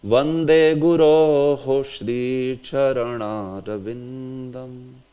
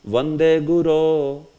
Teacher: So that Guroh, that H is there. It is short, but it is pronounced because there is hard consonant ahead. Sh, which is a sibilant, which is a hard consonant. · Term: visarga